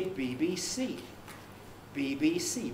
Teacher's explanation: it has two stresses and it's the last one bbc which is strong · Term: last syllable is strongly stressed